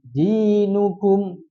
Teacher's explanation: Karena ada kasrah ketemu ya sukun. Panjangkan dua. Tidak boleh lebih, tidak boleh kurang. Dinukum. Nukum ketemunya dua harakat secara bersamaan. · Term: Mad thi